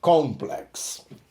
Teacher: a pronúncia igual ao do restante do mundo com a sílaba tônica no início